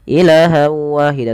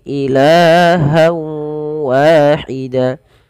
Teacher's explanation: Hamzah bertemu dengan alif kemudian berlafal ilah Wahida pada lafal Ila di sini kita panjangkan lanya sepanjang dua harakat karena i ada Mad thii fathah bertemu dengan alif jangan dipendekkan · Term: mad tabi'i